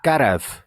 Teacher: Garav with the epenthetic vowel. Karev. That has a nice Sanskrit name, Swarabhakti, inserting of a vowel into a consonant cluster.